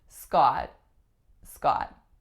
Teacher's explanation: The sound that the vowel makes is ah. And again, I'm pronouncing it with an unreleased T at the end